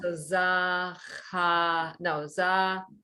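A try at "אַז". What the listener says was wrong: No, not za, just Az, and stop. Az, because the Shva did its job, it got you to pronounce the consonant.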